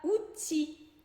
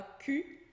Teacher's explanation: Outil acaba com L, mas esse L não é pronunciado.